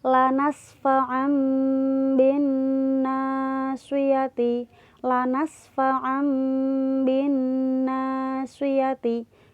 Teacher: Cara bacanya seolah-olah ada huruf mimnya ya, tanwinnya hilang. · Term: iklab